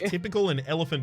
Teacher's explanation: a stressed syllable followed by two unstressed syllables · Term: dactylic stress pattern